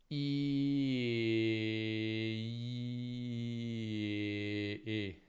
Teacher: La lingua rimane in avanti, si abbassa solo un po'. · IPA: /e/